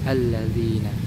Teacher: Adapun kadar panjangnya itu dua harakat dinamakan dengan mad thobi'i